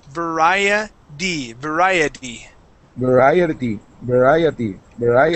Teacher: so that t we actually pronounce like a d